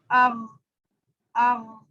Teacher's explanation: حمزہ غین جی زبر اغ اغ، اس کا مخرج اس طرح سے معلوم ہو رہا ہے کہ یہ حلق کے سب سے اوپر والے حصے سے نکل رہا ہے اور زبان تھوڑی سی اوپر جا رہی ہے، اٹھ رہی ہے